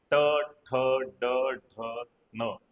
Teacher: मूर्धन्य. म्हणजे आपली कठोर टालू आणि मृदू टालू यांच्या दरम्यानचा जो भाग आहे तिथे जिभेला टच करून आपण उच्चार काढतो